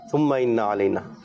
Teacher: نون کی زبر کو, حرکت کو ہم لمبا نہیں کریں گے